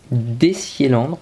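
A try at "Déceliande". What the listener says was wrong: Décéléandre. Alors attends, non, c'est Décéléandre. Liande. plein de gens qui prononcent un R parce qu'on a l'habitude, genre quand ça se finit en Yan, que ça finisse par un drôle après.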